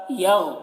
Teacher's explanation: غین کو موٹا کر کے پڑھتے ہیں اور اس میں قلقلہ نہ ہونے پائے